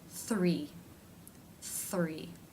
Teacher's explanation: The rest of the mouth remains relaxed. For the thr consonant cluster, the lips will begin to move into position for the r while the th is being made.